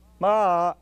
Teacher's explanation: that sound begins with an attack, an ictus, ma, and ends in a descending glide